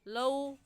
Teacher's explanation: लीन को खींच कर नहीं पढ़ते बल्कि नरमी से और जल्दी से अदा करते हैं। तो हम इसे जल्दी से पढ़ेंगे लौ, और इसको खींच कर नहीं पढ़ेंगे क्योंकि ये लीन है, मद्दा नहीं है।